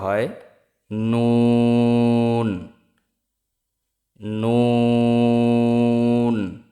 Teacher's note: জিহ্বার আগা তার বরাবর উপরের তালুর সঙ্গে লাগিয়ে উচ্চারিত নুন